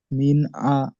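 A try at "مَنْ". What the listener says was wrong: মিন মিন পড়ছেন কেন? মিন পড়ছেন কেন? মিম জবর আছে, মিন পড়ছেন কেন? মিম নুন জবর মান হয়, মিম জবর মা, মি হবে কেন?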